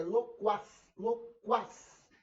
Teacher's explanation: quas não forma um dígrafo porque o U é pronunciado, só que ele é fraco. E o A é forte. Loquaz. Então estou diante de uma oxítono, não vai ter acento também. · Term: ditongo crescente